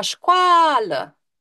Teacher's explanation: a este vocala ceea ce înseamnă că o este semivocala